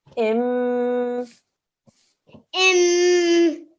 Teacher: It's a meme shaddad, a 2-second nasal sound.